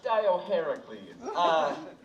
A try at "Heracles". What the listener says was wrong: The Dio is silent. Just Heracles.